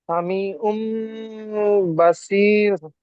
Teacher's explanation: তানবিনের পরে বা এসছে, তাই তানবিনের আওয়াজকে আমরা মিমের দ্বারা পরিবর্তন করে একালি পরিমাণ গুণা করে পড়বো। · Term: ইকলাব